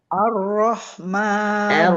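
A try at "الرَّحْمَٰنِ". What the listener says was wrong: Arroh, hati-hati. Jangan sampai A-nya jadi tebal. Arroh. Rohnya baru jadi Ar-Rahmanir-Rahim.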